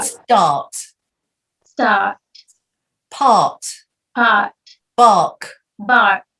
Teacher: instead of saying the R, you just go start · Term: long ah